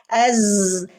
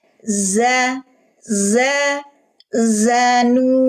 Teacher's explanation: Zanu, huruf zai. Az, desisnya dulu, baru harokatnya.